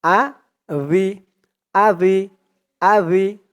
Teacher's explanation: জালের নিচে জের দিলে উচ্চারণ হয় জাল জের রি আ ভি জালের উচ্চারণটা একদম নরম পাতলা করতে হবে জিহ্বার মাথা উপরের দাঁতের মাথার সাথে লাগবে